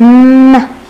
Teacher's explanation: ليش bilabial لأنه إعاقة الهواء بتكون بالbilabial point اللي هو مستخدم فيه الشفتين · ليش nasal لأن الهواء بيطلع من الأنف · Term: bilabial nasal sounds